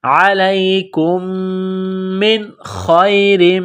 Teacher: علیکم من، میم ساکن کے بعد دوسری میم ہے جو مشدد ہے تو کاف کو میم کے ساتھ ملانا ہے، میم میں غنہ کریں گے، آواز ناک میں چھپائیں گے، میم کو نون کے ساتھ ملانا ہے۔ نون ساکن کے بعد خا ہے، حروف حلقی ہے تو نون ساکن پر غنہ نہیں کریں گے، آواز ناک میں نہیں چھپائیں گے